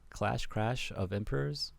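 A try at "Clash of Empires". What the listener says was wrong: You can't just use R and L interchangeably like it's Japanese.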